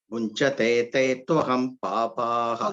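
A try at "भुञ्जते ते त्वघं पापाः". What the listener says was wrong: Twagam. Not twaham, twagam. Agam. Agam means papam. Agam. Bunchate te twagam papaha.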